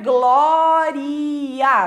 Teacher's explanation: vão separar o A do I, né? Vão fazer ali um hiato, né? Vão separar as duas vogais